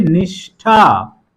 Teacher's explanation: ठ ध्वनि है, उसके पहले मूर्धन्य श लगेगा